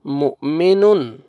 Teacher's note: میم پیش حمزہ جزم جھٹکے کے ساتھ پڑھیں گے